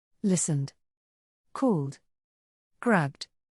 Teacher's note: Ed is pronounced D after voiced sounds.